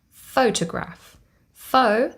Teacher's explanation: the first syllable carries the primary stress